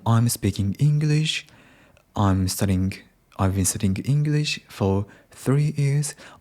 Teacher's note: even we don't ask a question the intonation goes up because we are not confident about speaking English. We can speak